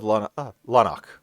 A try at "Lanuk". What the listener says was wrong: It's a U.